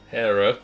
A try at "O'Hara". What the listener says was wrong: Ha! It's an A.